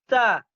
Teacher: Ujung lidah bertemu pangkal gigi seri atas. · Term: Huruf ta